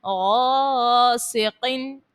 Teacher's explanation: قوف جو حرف مستعلیہ کا ہے اس کو پر پڑھیں ، غاسقن، غین اور قوف دونوں کو پر پڑھنا ہے، غاسقن